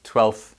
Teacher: With 12th, again, we don't pronounce every single letter. You can pronounce that without saying the F sound near the end.